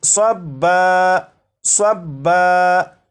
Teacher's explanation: یہ جو لفظ ہے یہ ہے صبن، صبن، وقف میں اسے پڑھیں گے صبا، صبا، یعنی دو زبر کو الف سے بدل کر